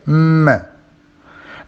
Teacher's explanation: it is a bilabial consonant this is its place of articulation the two lips come together they come close